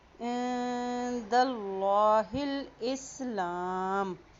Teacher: یہاں پہ دیکھیں اللہ کے نام سے پہلے زبر آ گیا ہے. جب اللہ کے نام سے پہلے زبر آ جاتی ہے تو وہاں پر اللہ کا نام موٹا ادا کیا جاتا ہے